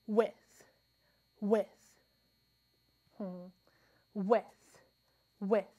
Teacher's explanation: With. I don't feel a strong burst of air, and I feel vibration as I'm saying the sound.